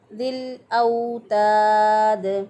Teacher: दाल वक़फ़ की सूरत में साकिन हो जाएगा तो इस पर कलकला करेंगे, क्योंकि दाल जो है वो हरूफ़ कलकला में से है।